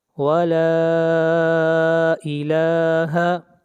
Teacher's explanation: لا کو کھینچ کر پڑھیں گے 3 الف کے برابر، یہاں پر مد منفصل ہے، اس مد کو 3 الف کے برابر کھینچ کر پڑھتے ہیں۔